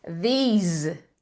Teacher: These termina com som de Z e tem esse i alongado.